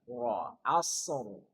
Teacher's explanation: Jadi ra-nya tebal. Kan sebelumnya sukun dan sebelumnya fathah. Maka wajib ra-nya dibaca tafkhim.